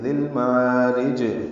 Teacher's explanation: را کو باریک پڑھیں گے زیر کی وجہ سے اور جیم سے وقفاً ملا دیں گے، ذیل معارج، اب جب